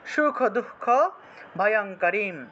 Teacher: সুখ দুঃখ ভয়ঙ্করি সুখ দুঃখ ভয়ঙ্কর এখানে বিসর্গ আছে বলে এখানে বিসর্গের পরিবর্তে হ এর মত উচ্চারিত হয়